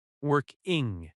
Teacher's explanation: Working has stress on work.